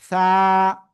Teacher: জিহ্বার আগা, উপরের 2 দাঁতের আগায় লাগাবো, লাগিয়ে এক আলিফ টেনে উচ্চারণ করব।